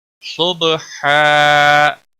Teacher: صاد کو موٹا پڑھیں گے، با کے اوپر قلقلہ ہوگا، با ساکن کے اوپر قلقلہ ہوگا۔ یہاں پر بھی اسی طرح وقف ہوگا جس طرح یہاں پر اور یہاں پر ہوا، تنوین کو بدل کر 1 زبر کے ساتھ مد بنے گا، مد کے ساتھ وقف ہوگا۔